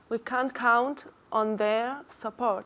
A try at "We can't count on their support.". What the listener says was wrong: Good. Has dicho there. Perfectamente. Ahora lo tienes.